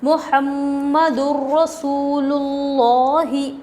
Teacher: تنوین کے بعد حروف یرملون میں سے را آ رہا ہے، بغیر غنّے کے ملا کر پڑھیں گے۔ بغیر غنّے کے ملا کر پڑھیں گے، اس کو ادغام بلا غنّہ اور ادغام تام بھی کہا جاتا ہے۔